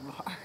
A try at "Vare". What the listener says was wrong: Well, there's an E on the end. I don't think it's Var. I think it's Vare. Vare. Rhymes with bear.